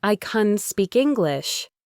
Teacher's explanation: Can, when it's unstressed, is often reduced to kun.